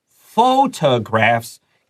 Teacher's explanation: Photographs needs to stress the first syllable